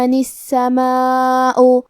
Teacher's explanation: مد واجب متصل کا معنی ہے کہ حرف المد اور اس کی وجہ جو کہ حمزہ ہے دونوں ایک ہی کلمہ میں ہو. ہم اس مد میں اپنی آواز 4 مد کے برابر لمبی کریں گے